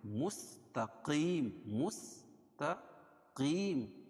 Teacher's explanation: मुस्तकीम, मुस्तकीम, काफ को मोटा पढ़ेंगे और या साकिन से पहले काफ के नीचे ज़ेर है तो या मद्दा भी होगा, और मीम पर वक्फ की सूरत में इस पर जज़्म लेकर आएंगे।